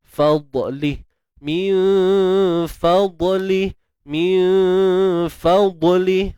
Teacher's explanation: huruf dad apabila sukun perlu ditebalkan tanpa lantunan